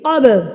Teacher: اپنے مخرج کے ساتھ ٹکرا کے واپس آئے گا، یعنی کہ تھرتھراہٹ سے، یعنی کہ وائبریشن سے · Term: قلقلہ